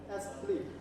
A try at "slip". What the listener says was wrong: slip not sleep ah remember this pronunciation double e sleep but just one e one I slip